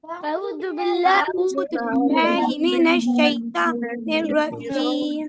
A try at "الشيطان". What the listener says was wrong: Kaifa you said shayta. It's not shayta, it is shayto. To. It's a full mouth. To.